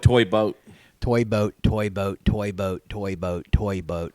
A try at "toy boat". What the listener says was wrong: The way you said boat changed every time you said it. It turned into some sort of weird boat, toy boat, toy boat. I want to say toy boy.